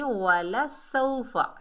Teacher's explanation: वावलीन से पहले ज़बर है, वाव साकिन से पहले ज़बर है, ये वावलीन है, नरमी और जल्दी से अदा करेंगे